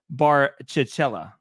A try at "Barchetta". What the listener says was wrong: Nope. There's no L's. There's no L's in there. Fiat Barchetta.